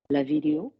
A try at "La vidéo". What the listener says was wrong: That's nice. Nice slide.